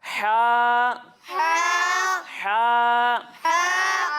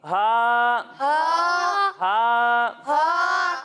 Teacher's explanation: جب ہم ہا کی ادائیگی کریں گے تو اس کی ادائیگی حلق کے درمیانے حصے سے ہوگی، اور جب ہم ہا کی ادائیگی کریں گے تو اسے ہم حلق کے نچلے حصے سے پڑھیں گے